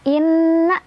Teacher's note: Inna ada gunnah musyaddadah karena ada nun yang bertasydid. Cara bacanya didengungkan.